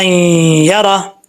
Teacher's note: اب اس کو شرن یرا نہیں پڑھیں گے، را کو یا سے ملائیں گے، کنیکٹ کریں گے